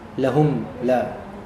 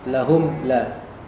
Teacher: yaitu benar-benar nampak mimnya, makhrajnya di syafah. Lahum la, mimnya jelas, lahum la. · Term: izhar syafawi